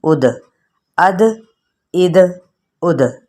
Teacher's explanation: دال چونکہ ساکن ہے اس لیے یہاں پر کلکلا کیا جائے گا